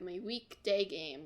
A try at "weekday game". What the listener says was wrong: The way that you pronounced weekday and weekend made it sound like you were saying my weekday game. Week end game.